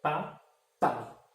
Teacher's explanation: Percebe que o A ele é muito mais tônico que o I?